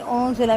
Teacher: نون ساکن کے بعد زا ہے، باریک اخفا کریں گے